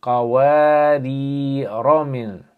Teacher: you are not going to pronounce the alif